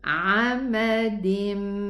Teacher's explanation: make it 2 counts ghunna because of the mim shadda